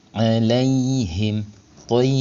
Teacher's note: Maka cara bacanya mim sukunnya ini dibaca jelas atau izar. Bunyi m-nya terdengar jelas. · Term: izhar syafawi